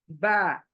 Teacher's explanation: फिर मखरज, जैसे मैंने कहा खाली मुंह से, और बा गीले होठों से, दोनों गीले होठ लगने से ऊपर नीचे के बा